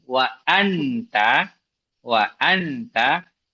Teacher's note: lidah tidak boleh nempel ke makhraj ta. Karena kalau ditempel ke makhraj dengungnya enggak keluar